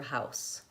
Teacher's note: the word house has the S sound, no voicing on the end